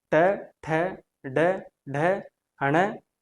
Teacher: इनका उच्चारण स्थान हमारी मूर्धा से होता है। इसलिए इनको मूर्धन्य ध्वनियां कहा जाता है।